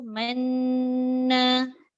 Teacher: Dia kena lama dekat man tu. Lepas tu baru muncung sekejap buat syarat. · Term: Ishmam